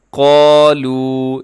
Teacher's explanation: اس میں قاف موٹا پڑا جائے گا